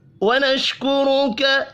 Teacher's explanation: را کو پیش کی وجہ سے پر پڑھنا ہے